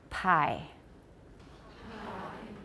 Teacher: say it slowly pi could you feel that you had air pressure there and then you let it go and it sort of exploded